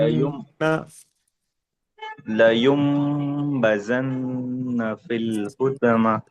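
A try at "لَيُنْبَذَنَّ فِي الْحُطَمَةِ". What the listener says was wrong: अच्छा, आप उसको नून पढ़ रहे हैं या मीम पढ़ रहे हैं? क्यों? ना, नून साकिन के बाद बा आए तो, कोई और बताइए, है? इकलाब होता है, ठीक है। नून साकिन के बाद अगर बा आए, नून साकिन नजर आ रहा है आपको? लयूम, लयूम में ये जो नून है, या के बाद उसके ऊपर सुकून है, उसके बाद क्या आ रहा है? बा आ रहा है।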